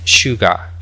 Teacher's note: esa s es una pronunciación un poco especial, eh, tiene que ser aspirada como si fuésemos a mandar silencio